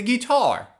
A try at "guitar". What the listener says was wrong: The word is pronounced guitar. Don't use the long E like green beans. It's not guitar. It's g. Use the short I sound like this is. To make this sound correctly, open your mouth a little more. When I say E like green beans, the mouth is very closed.